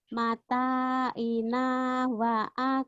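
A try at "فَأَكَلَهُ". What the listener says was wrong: Fa. Fa akalahu. Bukan wa tapi fa.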